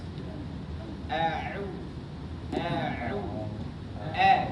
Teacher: Tengah tenggorokan. Posisinya agak ditekan. Sehingga pita suara kita itu semakin menyempit. Kemudian karena dia dhammah, maka posisi mulut juga harus dimonyokkan dan bunyinya harus sempurna. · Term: ain